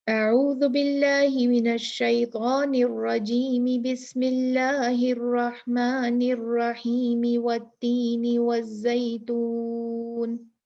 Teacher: कोई हमने वक्फा नहीं दिया, पढ़ते गए पढ़ते गए पढ़ते गए, कंटिन्यू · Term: तीनों को मिलाकर पढ़ना